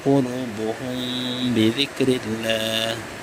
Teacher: Mim mati bertemu ba, maka ia disebut hukumnya ikhfa syafawi. Jadi bacaan mimnya samar-samar. Maksud samar itu tidak sejelas ketika hukumnya izhar.